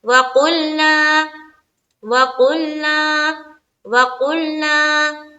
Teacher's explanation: جن حرفوں کو موٹا پڑھنے کا حکم دیا گیا ہے انہی حرفوں میں سے ایک ہے قاف، ٹھیک ہے؟ تو قاف کو ہم منہ بھر کر بولیں گے۔ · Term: موٹے حرف